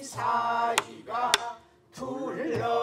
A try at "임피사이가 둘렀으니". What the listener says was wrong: 왔다 왜 이렇게 자꾸 한 장단을 더 한 박을 더 가려고 하지 말고 열하나 열둘에 떨어지란 게 임피사이가 둘렀으니 시작